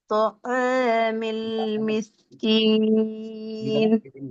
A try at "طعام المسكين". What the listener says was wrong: ஐன அலிஃபினுடைய சட்டத்துக்கு கீழாக உச்சரிக்கிறீங்க. அலிஃப் மாதிரி அல்ல, அலிஃபினுடைய கீழால் ஐனை உச்சரிக்கிறீங்க. ஐன் என்ன செய்யணும்? முன்னால வர எழுத்தோட சேர்ந்து வரணும். ரெண்டு மாதிரி உச்சரிச்சு வரும். மாதிரி மோதி பாருங்க, ரெண்டு மாதிரி.